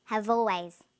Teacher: People have always. Notice how in conversation we link the final consonant sound v with the initial vowel sound or. Have always.